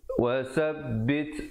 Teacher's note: Wasabbit, wasabbit, ada hamasnya, bunyi angin di situ.